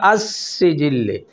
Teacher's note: الف لام کلمے کے شروع میں ہے اور یہ لام تعریف کا ادغام ہوتا ہے، یہ لام سین میں داخل ہو جاتی ہے